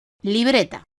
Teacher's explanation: La palabra libreta, de 3 sílabas, es llana porque tiene la fuerza de acentuación en la penúltima sílaba, es decir, la sílaba anterior a la última, bre.